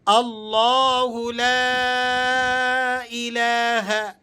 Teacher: لفظ اللہ کو یہاں پر کر کے پڑھنا ہے۔ بعض ساتھی جو اسے باریک پڑھتے ہیں بغیر پر کیے، ایسا درست نہیں ہے۔ لام کے اوپر جو یہ مد لگا ہوا ہے، اس مد کو مد منفصل کہتے ہیں، یعنی مد جائز، تو اس کو کم مقدار میں کھینچنا بھی جائز ہے۔